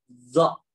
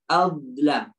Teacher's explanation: Zo merupakan huruf ya yang tebal, yang ketika kita keluarkan zo ini bersentuhan atau menempel dengan gigi. Jadi ditempelkan dengan gigi seri atas.